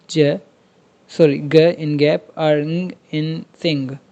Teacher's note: उसके बाद जो है वेलर्स, वेलर्स are the sounds produced when the tongue body middle part of the tongue touches the बेक of the mouth roof और the soft palate इन sounds like ग इन गैप और ng इन सिंग।